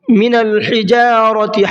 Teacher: حا کو حلق سے نکالنا ہے اور را کو منہ بھر کے پڑھنا ہے۔